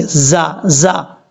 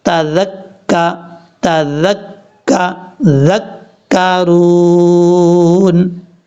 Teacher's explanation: زبان کا سرا اوپر والے جو دو دانت ہیں ان کے اندرونی کنارے سے لگے گا تو ذال پڑھا جائے گا · یہ ذال نارمل طریقے سے پڑھا جائے گا، اس کو نہ ہی سیٹی کے ساتھ پڑھنا ہے نہ ہی بھاری ساؤنڈ کے ساتھ پڑھنا ہے ۔ ذال کا مخرج یاد کر لیں، زبان کا سرا اوپر